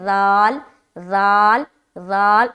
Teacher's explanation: زبان کی نوک کو ثنایا علیہ جو ہے اس کے کنارے پر لگانا ہے اور ذال کو ادا کرنا ہے